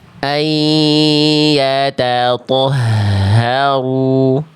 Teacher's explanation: rasakan H besarnya dilafalkan dari tenggorokan pangkal. Karakter nafas dari H besar ketika mengalir itu berat.